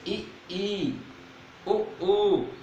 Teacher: यहाँ पे हमारा मुंह क्लोज रहता है, खुलता नहीं ज्यादा है। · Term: समृद्ध